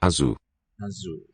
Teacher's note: in portuguese z is a voiced z sound unlike spanish